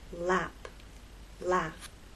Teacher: The tip of your tongue dropped to make the next vowel sound.